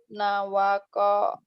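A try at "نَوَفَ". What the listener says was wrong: nawako. Kok titiknya itu satu bukan dua. nawafa bukan nawako ya. Nawafa.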